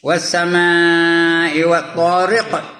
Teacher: Riq ada qalqalah ya. Qalqalah kubra ya.